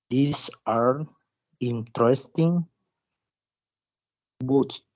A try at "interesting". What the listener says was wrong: Pero el acento es interesting. Yo escuché que le dijo interesting, pero es in. El acento es ahí, interesting. Sí, la está pronunciando bien, solo el acento que escucho que lo dice interesting, pero es al inicio, interesting, porque si lo escuchamos ya vamos a ver.